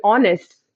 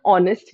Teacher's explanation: in honest we do not pronounce this letter H so the first sound of this word honest is a vowel sound